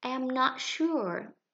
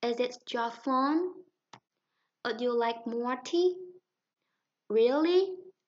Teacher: Chúng ta cần lên giọng ở cuối câu. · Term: rising intonation